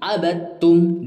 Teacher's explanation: cuman ditasyidkan ke huruf tu jadi abad Bukan abadtum tapi abadtum dia langsung dimasukkan dileburkan ke huruf ta